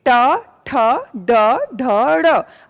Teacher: आपने बोला आपका जीभ ऊपर गया, टर्न हुआ, वो मूर्धा को टच कर रहा है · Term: मूर्धन्य